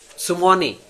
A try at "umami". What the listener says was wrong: No, just you. Start with the letter U.